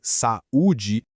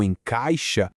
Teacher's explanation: No iato, como em saúde, as vogais se separam em sílabas diferentes. Já no ditongo, como encaixa, elas ficam juntas.